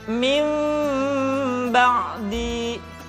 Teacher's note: Kemudian diucapkan mim dengan cara yang samar. Caranya, ketika mengucapkan huruf mim, kedua bibir kita agak sedikit direnggangkan, tidak sempurna rapat. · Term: iqlab